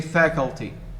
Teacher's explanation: native speakers of English say faculty, meaning they stress the first syllable